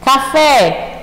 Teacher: são palavras cujo acento tónico recai na última sílaba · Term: oxítonas